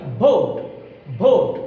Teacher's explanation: দুই ঠোঁট লাগিয়ে বললে এটা ভুল হবে